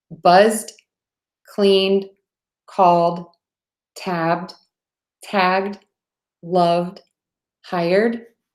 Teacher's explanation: when we have that voiced sound we're gonna add another voiced sound the D buzz cleaned called tabbed tagged loved hired and then when we